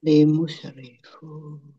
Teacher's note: Pak Domah wawu sukun mat tobi'i, tetapi karena bertemu dengan huruf terakhir yang dibaca sukun karena wakof, maka menjadi mat arid lis sukun. Dibaca panjang, boleh 6, boleh 4, boleh 2 harokat.